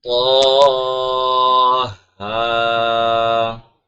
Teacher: طا بھی موٹا ہوگا، طا کے ساتھ جو الف ہے وہ بھی موٹا ہوگا، طا ہا، اس طرح پڑھا جائے گا، ٹھیک ہے۔